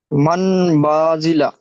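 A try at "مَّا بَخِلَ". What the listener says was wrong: মাম বাখিলা। মান হবে না, মাম। মান হবে না, মাম।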